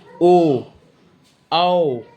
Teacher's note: जिनका उच्चारण करते समय ओठ गोल हो जाए, जैसे ओ, औ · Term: वृत्ताकार